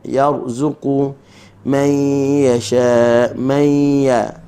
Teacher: nun mati bertemu dengan ya, hukumnya adalah idgham ma'al gunnah.